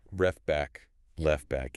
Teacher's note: the T is basically gone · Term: elision